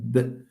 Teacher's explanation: B is a voiced bilabial stop.